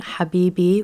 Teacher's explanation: The stress is going to be on that second syllable there based on how the word is structured